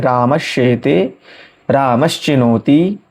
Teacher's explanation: दंत स को श हो जाएगा, तालव्य श हो जाएगा